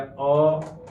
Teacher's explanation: स्वरों के उच्चारण करते समय ओष्ठ गोलाकार नहीं होते हैं, वह स्वर अर्धवृत्तमुखी कहलाते हैं।